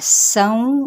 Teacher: سین پہ سیٹی اور ساتھ میں ادغام مع الغنہ کا قاعدہ